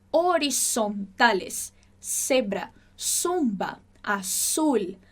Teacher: Som do Z do espanhol, não tem o zumbidinho de abelha. Não existe esse som do espanhol que a gente tem no português.